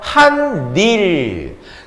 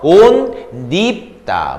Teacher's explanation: 두 단어지만 이어서 한마디로 발음할 때도 니은 첨가가 일어나요